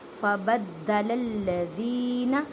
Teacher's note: دال مشدد ہے، دال پر جماؤں کے ساتھ قلقلہ کریں گے، دال کو مضبوطی کے ساتھ پڑھیں گے۔